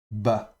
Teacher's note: Si le dagesh est dans cette bégat kefat ici, on le prononcera donc bet occlusif, et donc un b explosif, accompagné donc de la voyelle ici, le patar, qui est comme une barre horizontale sous la consonne.